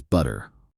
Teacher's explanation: Americans often turn the T into a soft D sound. This is called flapping.